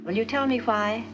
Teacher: in many u.s accents wine and wine sound the same but in mid-atlantic the wh sound is pronounced hua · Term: lack of wine-wine merger